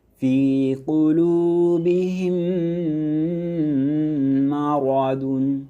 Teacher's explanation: ঈদগাম। মিম সাকিনের পরে মিম হরফ এলে ঈদগাম গুন্না সহ মিলিয়ে পড়তে হয়